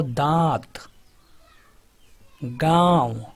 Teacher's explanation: अनुनासिक में जो उच्चारण होता है मुख के साथ नाक से भी होता है